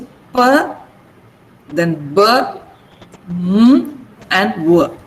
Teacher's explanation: So for all these sounds, we use both lips.